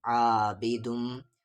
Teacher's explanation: میم پر تشدید ہے، غنہ ہوگا